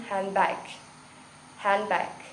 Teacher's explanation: most of american english speakers do not pronounce the d in handbag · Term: deletion